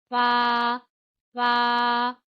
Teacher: ऊपर के जो दांत हैं उनके किनारे, यानी जो नोक है नीचे की तरफ, वो किनारे जो हैं वो आप नीचे वाले होंठ के गीले हिस्से पे लगाएंगे